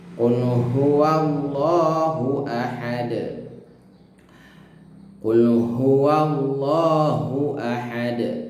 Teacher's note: maka harus dibaca tebal, baca qalqalah ya, ada pantulannya. Dan pantulannya adalah ahad ya.